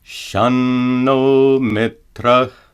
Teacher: if a final uh no sora is followed by a dental letter tah tah dah dah or nah it must be pronounced as a dental not